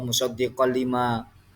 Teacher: Di situ ada bacaan idgham bila gunnah. Ada tanwin berupa khaten bertemu dengan huruf lam.